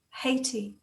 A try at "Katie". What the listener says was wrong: Katie. Katie with a K.